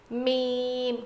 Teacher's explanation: میم میم، دونوں ہونٹوں کے سوکھے حصے سے ادا ہوتا ہے. میم، گیلے حصے سے با ادا ہوا تھا، میم سوکھے حصے سے ادا ہوگا